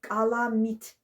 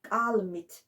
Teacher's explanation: m samitinin qarşısındakı a saiti düşdü. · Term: qum şiva